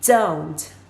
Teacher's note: It's almost like there's a combination of the D sound and the Z sound, but it's a very, very slight combination. So it's not a vivid Z.